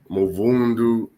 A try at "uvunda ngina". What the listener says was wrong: No, drop M. Uvunda ngina vunda.